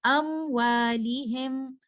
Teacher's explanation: ہم غنہ کو بہت زیادہ ہولڈ نہیں کریں گے